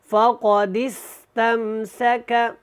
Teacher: اب ہم نے اس دال کو اس سین کے ساتھ ملانا ہے، یہ الف نہیں پڑھنا، اور یہاں پہ قاف کو موٹا پڑھیں، فقد استمسک، سین کو اچھی طرح سیٹک کی آواز کے ساتھ ادا کیا کریں